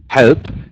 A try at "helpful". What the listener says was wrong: Try to say, yeah, the P sound is a bit less. Helpful. Helpful.